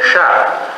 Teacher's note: एक जीभ को ऊपर लगाते तालू में, तब क्या बोलते शा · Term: तालु में सकार